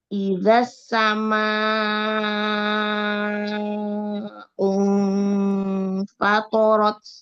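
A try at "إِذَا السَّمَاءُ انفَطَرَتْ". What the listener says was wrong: Kayaknya kepanjangan deh, 4 atau 5 harokat mat wajibnya. Ya, kurangin.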